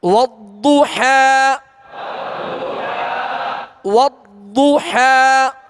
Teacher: ضاد کی ادائیگی میں زبان کی کروٹ اور اوپر کی 5 داڑھوں کی جڑ، یہ اس کا مخرج ہے نکلنے کی جگہ.